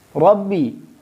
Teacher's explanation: اس کو بھی ہم موٹا پڑھیں گے کیونکہ یہاں پہ را پہ زبر ہے اور ہم نے بیان کیا ہے کہ جب را پہ زبر یا پیش ہو تو پھر اس کو ہم موٹا پڑھیں گے۔